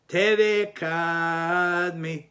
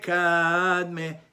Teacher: The emphasis is on the syllable before the last syllable